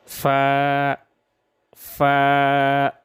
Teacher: ثنائے علیہ کا کنارہ جب نیچے ہونٹ کے درمیان سے لگ جائے تو اس سے فا ادا ہوتا ہے